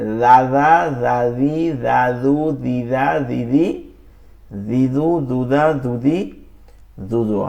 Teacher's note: জিহ্বার আগা সামনের উপর দুই দাঁতের আগার সঙ্গে লাগায়